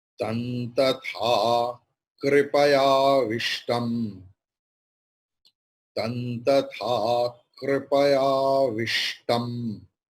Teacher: So Anuswara's pronunciation will be nakara as like Tantatha Kripaya Vishtam.